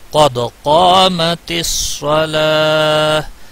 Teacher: اگر آپ یہاں ٹھہرتے ہیں پھر آپ نے گول تا کو ساکن کر ہا میں بدل جاتی ہے، پھر ساکن یہاں رکنے کی صورت میں آپ نے پیش نہیں پڑھنا ہے